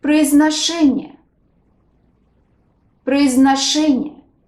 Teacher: Stress falls on the fourth syllable.